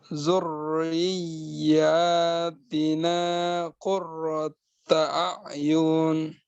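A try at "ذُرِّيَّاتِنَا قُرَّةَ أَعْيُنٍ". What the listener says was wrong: Sekali lagi agak tanggung nih kadarnya. Mungkin panjang pendeknya mungkin. Yunnya harus benar-benar pendek.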